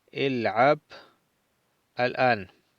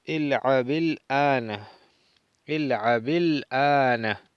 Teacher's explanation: Pero si quiero leer corrido, le coloco la vocal i a la ba del verbo y digo il'abi, il'abil ana. No pronunciamos el alef del artículo al-an.